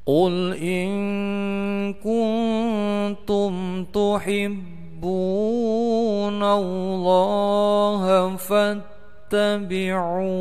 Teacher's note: Ada ikhfa hakiki mendengung panjangnya dua harokat, kemudian ada mim sukun bertemu dengan huruf ta, bacaannya jelas pendek, disebut dengan idhar safawi